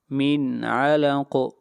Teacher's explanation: یہاں پر اظہار ہوگا اس لیے کہ نون ساکن کے بعد حروف حلقی میں سے عین ہے تو غنہ نہیں کریں گے